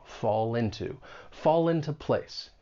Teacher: When you pronounce this phrase keep in mind linking will often occur. We can link that consonant sound in fall with the beginning vowel sound in into